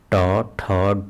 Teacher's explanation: ट वर्ग में जो जीभ की नोक होती है वह तालो को छूकर व्यंजनों का उच्चारण करते हैं